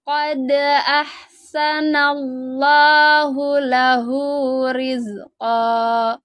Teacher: Lafadz Allahnya dibaca tebal ya, terus ditekan karena ada tasydidnya.